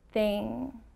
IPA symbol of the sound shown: ŋ